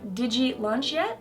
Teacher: assimilation also happens with the D and ya phonemes